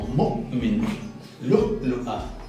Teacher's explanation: Se llama oclusión glotal. Era este sonido de ¿verdad? En palabras, por ejemplo, como mu'min, lu'a.